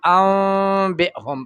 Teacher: دا نون په اقلاب بوشي، نون په میم بدل شي